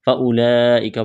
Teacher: لمبی مد ہے، کھینچنا ہے، کاف کو باریک کرنا ہے